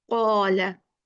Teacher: Not only qaf heavy, also we are making the alif heavy.